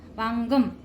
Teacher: ग वर जो अनुस्वार आहे त्याचा उच्चार म करायचा